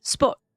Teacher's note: So >> sport >> the the in French it's uh ferus you don't pronounce that last t >> sport >> it sort of doesn't sound like you don't pronounce the last t here too but it's a bit faster at the end sport like you're on the verge of pronouncing that t